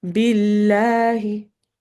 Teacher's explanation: Lafz jalala is actually light when a kasra comes. So it's not billah, it's billahi.